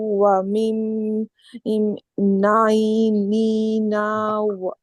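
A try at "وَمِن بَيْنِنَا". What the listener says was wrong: বাইনিনা বা আছে না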